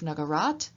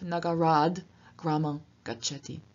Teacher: We have a change in Nagarat to Nagarad. The T changes into its voiced equivalent D, because it's followed by a voiced sound at the beginning of Gramam. And so instead of Nagarat, we have Nagarad, Gramam Gacchati.